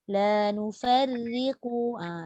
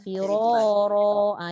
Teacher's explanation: Nipis lah sebab ra tu baris bawah. Gitu. Kalau ra tu baris atas, firara. Dia automatik jadi tebal.